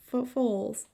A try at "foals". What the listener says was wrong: Foals. You read them like fowls, like birds.